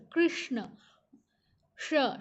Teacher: श मुर्धा को टच करता है हमारा टंग हमारा जीवा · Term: मूर्धन्य